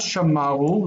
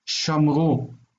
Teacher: And so when we moved over to the next stage in the development of the language, how they use the words, this one lost all emphasis and disappeared, and the vowel on the end took the accent. So the word for they have kept is not shamaru, that we would expect, but shamru.